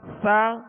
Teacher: سا کو نرمی سے پڑھیں گے، اس میں سیٹی کی آواز بالکل پیدا نہ ہو، نرمی سے ادا کریں گے.